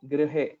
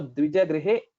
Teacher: So dvijagrihe, it should be quite normal. There is no stress on gr.